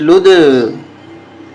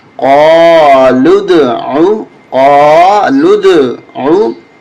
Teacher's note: دال پہ قلقلہ کریں گے، یعنی آواز ٹکرا کر آئے گی، ایسے لگے گا جیسے 2 دفعہ دال نکل رہی ہے منہ سے